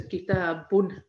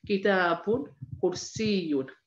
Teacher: So instead of saying kitabu, which is one vowel, if we have a double vowel, we put on the end a n sound, noon. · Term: tanween